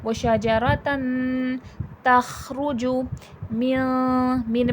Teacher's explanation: نون کی آواز ناک میں چھپتی ہے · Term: اخفا